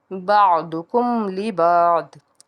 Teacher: میم ساکن کے بعد لام ہے، تو اس کو بھی ہم نے اظہار کرنا ہے، یہاں پہ غنہ نہیں کرنا